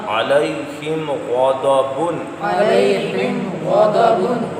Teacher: غین اور دعاد کو پر پڑھنا ہے، مستعالیہ حروف ہے